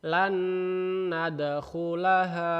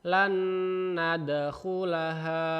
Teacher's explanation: Nun mati ketemu nun, jadi lan nadkhulaha. Ya, jadi nun yang satu langsung dimasukkan ke nun yang selanjutnya. Ditahan 2 harokat. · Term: idgham bi gunnah